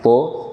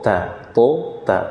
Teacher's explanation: Kalau ta ada hams, aliran nafas.